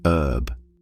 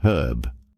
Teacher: In American English, they often drop the h and say herb. But in British English, they keep the h and pronounce it herb.